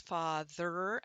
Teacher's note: we're sliding through from the th to the r position, and it's a syllabic R